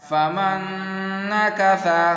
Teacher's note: یہاں پر نون ساکین ہے اور یہاں نون یرملون کی ہے، تو یہاں پر پڑھنا غنہ کے ساتھ